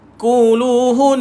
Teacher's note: wajibal gunnah. Dia kena lama sikit tekan. Baru lepas.